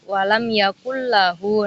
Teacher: Selanjutnya ada idgham bila gunnah, yakni nun tanwin bertemu dengan huruf lam dan ro. Bacaan idgham bila gunnah ini tanpa dengung di hidung atau tanpa gunnah gitu